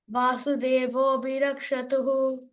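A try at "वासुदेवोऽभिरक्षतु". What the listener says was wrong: There is no tuhu, only tu, rakshatu. Okay? There is no visarga there.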